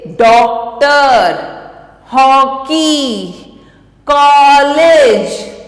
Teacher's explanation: आ और ओ के बीच की ध्वनि निकलती है